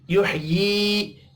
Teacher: युह्यी या मद्दा है, एक अलिफ के बराबर खींच कर पढ़ना है।